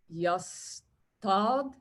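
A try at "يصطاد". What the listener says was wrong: Fantastic.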